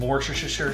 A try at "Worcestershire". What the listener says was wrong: There's not 7 S's.